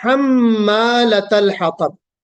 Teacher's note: यहाँ पे तशदीद है मीम के ऊपर, तो यहाँ पे हमको गुन्ना करना है